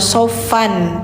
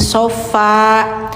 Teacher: Jadi bacanya jangan sofan tapi sofa, karena tanwinnya diganti ke panjang, suara n-nya dihilangkan, hukumnya mad iwad.